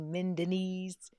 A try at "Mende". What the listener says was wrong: I'm gonna need you not to call it Mendenese. It's Mende, not Mendenese. Why you keep putting a Z on it? It's not. Mende. It's men. Yeah, it's Mende, and I can